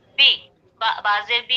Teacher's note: कुल अऊज़ु बी, बाजेर बी, बा के नीचे जेर है, जेर को मारूफ पढ़ेंगे, मजहूल आवाज से बचेंगे और थोड़ा भी नहीं खींचेंगे